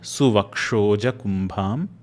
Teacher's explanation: Make sure that you're pronouncing that bha as a mahaprana sound.